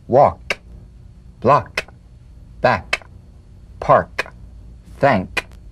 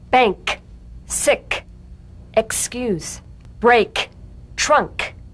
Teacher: let the tongue spring away in the soft, unvoiced click of the K drum beat. Feel a crisp tap and a pulsation in the back of the tongue. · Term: unvoiced tongue back plosive consonant